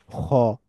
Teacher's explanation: অ sound অ sound হবে না আবার সরাসরি আ সাউন্ডও হবে না ফ্ল্যাট আ সাউন্ড না মোটা আসা তার মানে খই দা জা র যা সা দ